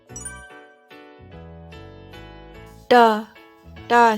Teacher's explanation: ट का उच्चारण मूर्धा से होता है